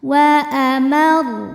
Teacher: Huruf ra apabila berhenti maka disukunkan dan dibaca secara tafkhim sebab sebelum ra disukunkan ada baris fathah, maka ro-nya tebal.